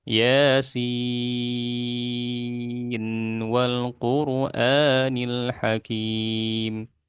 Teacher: di sini Imam hafs dia mengizharkan ya Yasin Wal quranil Hakim ya nunnya kelihatan jelas itu Imam hafz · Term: izhar riwayah